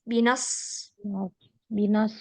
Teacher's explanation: Di situ ada huruf sod. Dia mirip dengan huruf sin, tetapi tebal. Itu bedanya di tebal atau tidaknya saja ya.